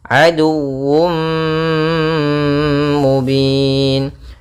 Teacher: tanwin yang dimasukkan ke huruf mim, tapi masih menyisakan suara sedikit daripada huruf tanwinnya. Sehingga di sini idghamnya kita menggunakan dengan idgham naqis.